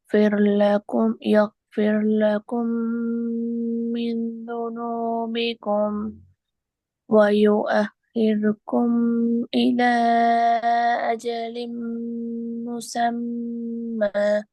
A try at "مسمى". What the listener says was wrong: முசம்ம அல்ல, நீட்டி நிப்பாட்டுங்க லைட்டா, அப்பதான் சரியா வரும். முசம்ம. இலா நிட்டுங்கோ. இல மதுர அடையாளம் மிகுது.